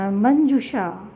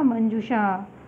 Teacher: मंजूषा, ये मूर्धन्य श रहेगा